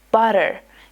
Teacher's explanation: So instead of saying butter like butter, Americans say it like butter. It's almost like the T becomes a soft D.